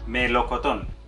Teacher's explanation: Lleva el acento en la última sílaba y termina en N.